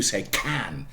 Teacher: Very briefly, yeah, aspiration, which means voiceless plosives carry aspiration. P, t, k. There is a h after that